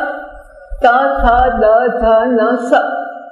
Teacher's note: દાંતને અડકે એટલે દંત્ય થાય